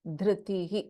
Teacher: Then in Dhritihi, we have Mahaprana Dha.